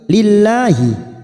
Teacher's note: lam jalalah yang didahului kasroh kita baca tarkik